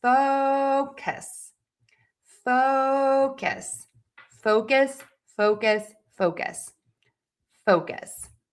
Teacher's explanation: That means it is going to be louder, longer, higher in pitch. Syllable number two will be shorter, softer, and lower in pitch.